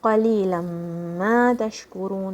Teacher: This is idgham. The two letters are merging, the two sounds are merging. Ma, 2 counts.